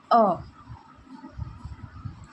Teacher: मध्य स्वर जीभ के मध्य भाग से इसका उच्चारण होता है। अ ना ही सामने ना ही पीछे। मध्य में अ का उपयोग किया जाता है।